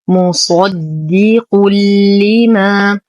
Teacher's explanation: تنوين وبعده حرف اللام، فالحكم إدغام كامل بلا غنة